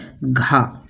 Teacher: तो सघोष और महाप्राण दोनों है घा